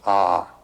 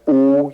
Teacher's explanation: You start in the back of the mouth. Ah, and then u you fill the mouth and m closes at the mouth.